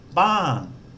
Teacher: So a word that starts with a mid-class consonant that uses the second tone mark has a falling tone. So it starts off with a lot of energy, then drops away.